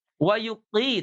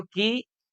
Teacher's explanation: Pangkal lidahnya terangkat ke langit-langit. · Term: huruf istiala